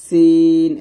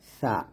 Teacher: সিন উচ্চারণ করতে হবে জিহ্বাটা নিচে দাঁতের মাঝে লাগিয়ে, আর সা উচ্চারণ করতে হবে জিহ্বাটা উপরে দাঁতের আগে লাগিয়ে